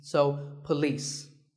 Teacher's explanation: It's pa and lis with the stress on lis.